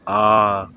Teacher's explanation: तो आ में सबसे ज़्यादा मुंह खुलता है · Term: विव्रत स्वर